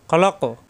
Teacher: কফে ধাক্কা কলকলা হবে, সাকিন হয়ে যাবে। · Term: কফ সাকিন কলকলা